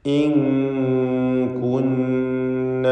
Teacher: ഇൻ കുന്ന ശദ്ദുള്ള നൂനിനെ മണിക്കണം.